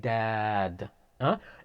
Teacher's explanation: the next one is dal it's simple it's like saying dad it is pronounced from the tip of the tongue towards upper incisors